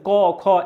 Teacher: এই যে বর্ণগুলো রয়েছে ক, আপনি যখন উচ্চারণ করবেন ক খ, এগুলো কিন্তু গলার ভেতর থেকে নিচ থেকে আসবে, অর্থাৎ কণ্ঠমূলীয়